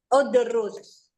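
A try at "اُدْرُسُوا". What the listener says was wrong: Kok udrus doang? Ada tambahannya, Bu. Domir antum. Udrusu.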